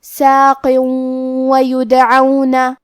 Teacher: کلمت ویدعون، واو حروف الادغام بغنہ میں سے ہے، اور ادغام کا معنی ہے حرف کو حرف میں داخل کرنا، تو ہم یہ تنوین کو واو میں ملا کے غنہ اور تشدید کے ساتھ یہ حکم کو ادا کریں گے